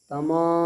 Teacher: उसके बाद मीम अलिफ ज़बर मा, यानी अलिफ मद्दा है तो खींचेंगे एक अलिफ के बराबर